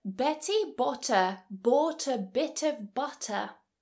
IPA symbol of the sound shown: b